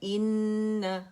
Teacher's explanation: اکمل ما تکون غنہ کریں گے، ٹھیک ہے، مکمل موسٹ کمپلیٹ لانگسٹ غنہ، مکمل ترین غنہ جسے کہا جاتا ہے، وہ ہم نے کرنا ہے نون پر، ٹھیک ہے، مشدد ہے۔